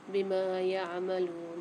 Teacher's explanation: میم کے ساتھ الف آ رہی ہے، میم کو ایک الف مقدار کھینچیں گے